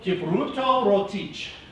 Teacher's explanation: you have to use rolled R's